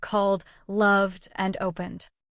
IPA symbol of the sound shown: d